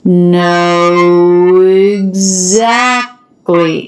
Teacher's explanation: it can help you think of a w Glide consonant between the two to help you link those smoothly